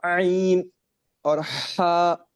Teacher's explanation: اور ہا پروناؤنس from the middle part of throat یا بیچ میں